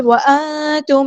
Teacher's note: وانتم نون پہ غنہ نون ساکن ہے، نون ساکن کی آواز کو یہاں پہ چھپا دیں گے، اخفا ہو رہا ہے. میم ساکن پہ اظہار شفوی اور ٹائم نہیں دینا.